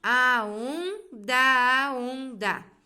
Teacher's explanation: Vai juntar assim, ó, a onda, a onda. Da palavra onda é uma sílaba átona que se liga ao artigo a, monossílabo átono, pois ambos são pronunciados em uma única emissão de voz.